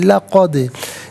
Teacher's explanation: لا علیحدہ، قد علیحدہ ملا کر پڑھیں گے لقد، دال ساکن ہے لیکن حرف قلقلہ ہے تو آواز لوٹتی بھی محسوس ہونی چاہیے